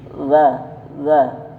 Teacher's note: La ujung lidah bertemu dengan ujung gigi atas